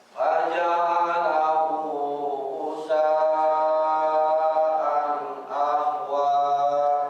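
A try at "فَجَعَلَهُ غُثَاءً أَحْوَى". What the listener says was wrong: Haknya ditipiskan Pak. Ahwa. Faja'alahu ghutha'an ahwa.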